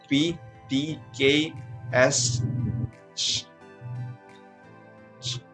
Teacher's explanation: You will feel no vibration on your throat. Just a short explosion of air as you pronounce. Pronounce each of these consonant sounds and feel no vibration in your throat. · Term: voiceless consonant